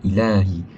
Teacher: Mad tabi'i iaitu pada perkataan ilahi. Ilahi patut dipanjangkan 2 harakat, kerana huruf lam berharakat fathah tegak, ada lam, ada alif kecil dekat ilahi itu.